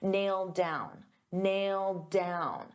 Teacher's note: So because I have a D sound on down and these two go together, I'll pronounce it as one and you'll only hear one D sound